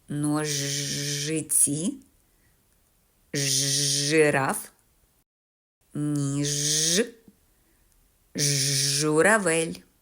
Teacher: звук Ж твердий приголосний і м'яким не буває ніколи